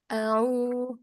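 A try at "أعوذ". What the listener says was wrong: Enggak, au. Itu jadi kayak tashil hamzahnya. Au. A'udzu.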